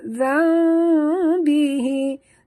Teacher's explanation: Nun mati bertemu ba. Tukarkan bunyi nun mati kepada bunyi mim. Iqlab, 2 harakat dengung.